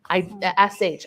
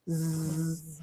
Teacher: Put your hand up to your neck and make the shh sound. SH, I don't feel any vibrating. But if I make the Z sound, zzz, I feel the vibration.